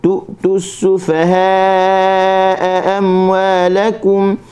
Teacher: Kalimah tu'tu huruf hamzah tu terus berhenti. Okey, jangan baca tu tak boleh.